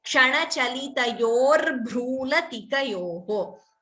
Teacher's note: This Bhru is Mahaprana, and that letter also should be chanted clearly.